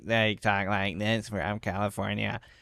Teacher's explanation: they all talk like this with very serious vocal fry